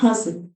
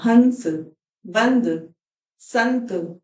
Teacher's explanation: हस में मैंने सीधे ना नहीं बोला नाक से थोड़ी सी आवाज निकाली हस और हंस में मैंने न बोला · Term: चंद्र बिंदु